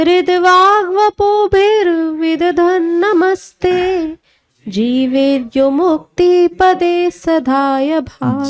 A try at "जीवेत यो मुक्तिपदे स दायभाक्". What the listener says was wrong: जीवेत, तो हलंत मत लगाइए, जीवेत यो मुक्तिपदे सदाय भाक्।